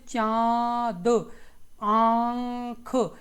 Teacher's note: आपके मुख से भी ध्वनि निकल रही होगी और नाक से भी आपकी ध्वनि निकल रही होगी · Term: अनुनासिक स्वरों